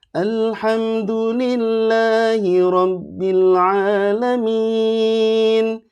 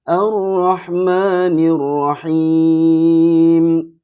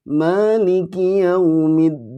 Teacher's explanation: rumusnya ciharkah pertama naik, ciharkah kedua datar, ciharkah ketiga turun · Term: naik datar turun